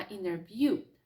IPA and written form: ˈɪnərvjuː (interview)